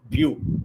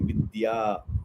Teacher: So bhya is Mahaprana. Yayurabhyu, you have to give that stress. Bhyu. And dya is Alpa Prana. You should not give stress for dya. It's like vidya.